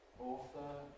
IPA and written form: ˈɔːθə (author)